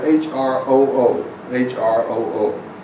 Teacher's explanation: Note that these are rolled R's, and the H is more of a HK sound